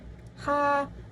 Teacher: H, konsonan geseran, dorsovelar, tak bersuara